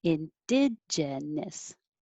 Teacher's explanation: I should actually be saying gen instead of gin. That's my own accent.